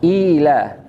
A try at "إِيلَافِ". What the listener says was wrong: Inya panjang Pak, 2 harokat. Ila. Harus 4 harokat. Kalau hafasan Asim minimal 4 harokat ya.